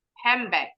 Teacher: Kalau huruf D-nya memang silent. Huruf N-nya berubah bunyi jadi M.